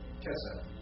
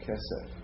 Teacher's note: And notice that's another one of those Sogolit nouns with the accent on the first syllable